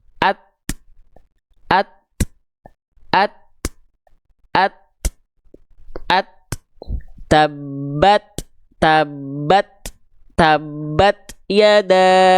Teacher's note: Karena dia bukan desis tapi percikan nafas, bukan berdesis. Ta itu nggak punya sifat sofir teman-teman sekalian, ya, dia hanya berupa percikan nafas saja